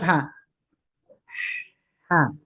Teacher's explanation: jadi hembus udara dulu ya baru vokal